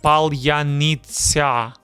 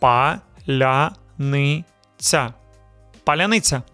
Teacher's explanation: The lia is soft. The tsa at the end is also soft.